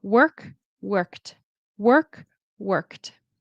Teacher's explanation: The ED in this word turns into a T sound